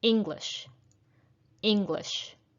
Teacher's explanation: it is the first syllable that is stressed